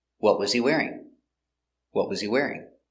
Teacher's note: the intonation goes down at the end because it's an information question it starts with what when you start with a question word